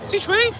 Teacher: it goes up at the end, like a high pitch